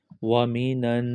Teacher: نون کو آگے نون کے ساتھ ملائیں گے، اور جب نون پر شد آ جائے تو وہاں غنہ کرتے ہیں۔ غنہ یعنی ناک میں آواز کو چھپانا۔ نون نون زبر نن، اس نون کو اس نون کے ساتھ ملائیں گے۔